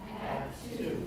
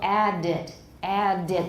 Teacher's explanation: the add, it's going to be cut off rather than making it fully voiced, as it would be if there were a vowel next.